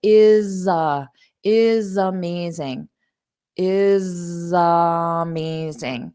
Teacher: I didn't put a pause between them because I combined the sounds I link them together